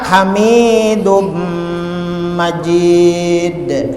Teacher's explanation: Sekalinya itu ngarannya idgham bigunnah, dibacanya badengung dan tanwinnya hilang masuk ke huruf mim, hukumnya idgham bigunnah